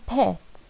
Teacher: The third one, pet, like head, short, mid, front spread vowel